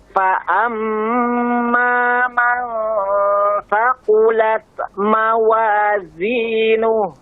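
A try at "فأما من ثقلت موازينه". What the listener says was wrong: Nah, untuk hamas pada taknya thaqulat, jangan sampai seperti memantul, tapi thaqulat mawa, angin saja. Jangan seperti thaqulat, tapi thaqulat. Ah, angin saja nih.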